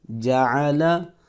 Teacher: عین کو ہم حلق سے پروناؤنس کریں گے